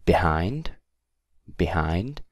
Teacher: stress is on hind